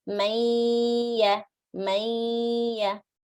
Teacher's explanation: half of the sound is from the nose, half of the sound is from the makhraj of ya, from the mouth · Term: incomplete idgham with ghunna